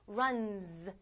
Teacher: s를 붙이면 끝나는 소리가 voiced, 울리면 얘도 울려서 이런 소리가 난다